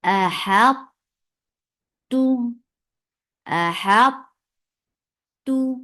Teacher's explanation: ہا کو تو کے ساتھ ملایا جائے گا تو تو کی ہیوینس کو ظاہر کیا جائے گا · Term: ادغام ناقص